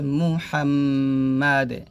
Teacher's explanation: মুহা মিম জবর হাম মুহাম্ম মিম জবর দাল দুইটা তিন আছে যদি আমরা এখানে থামি তাহলে দালে সাকিন হবে এবং কলক হবে